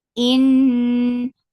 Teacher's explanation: Nun yes gunna. This gunna is akmal, so keep the sound in your nose for longer time.